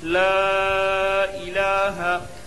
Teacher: لا الہ، لام کے اوپر کھڑا زبر ہے، کھڑا زبر برابر ہوتا ہے الف مدہ کے، اس لیے کھڑا زبر کو ایک الف کے برابر کھینچ کر پڑھیں۔ لا الہ، ہا کے اوپر زبر کی حرکت ہے، لا الہ۔